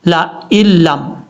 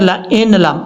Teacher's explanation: حمزہ کو جب لام سے ملائیں گے تو بیچ میں نون کو چھوڑ دیں گے